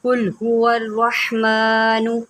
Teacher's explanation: قاف کو موٹا کریں کیونکہ یہ حروف مستعلیہ میں سے ہے